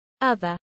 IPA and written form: ˈʌðəɹ (other)